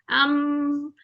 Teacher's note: जैसे अम, नोजी में से आवाज आती है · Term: नेजल साउंड